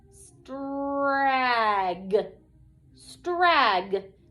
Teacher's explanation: my vowel is going to be short. It's going to say ah, okay? These 3 letters, we're going to hear the individual sounds in these 3 letters, but they are going to blend together to make a unique sound.